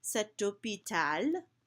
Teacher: you can hear that T carrying me into the next word